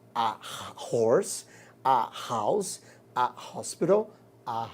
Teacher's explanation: Porque o H aqui, ele tem o som do R, som consonantal. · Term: som de consoante